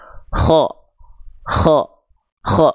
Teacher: huruf kho itu dilafalkan dengan mengalir nafas. Dan karakter nafasnya seperti mendengkur. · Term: Hams